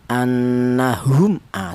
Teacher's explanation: mim mati ini cara bacanya dibaca jelas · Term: izhar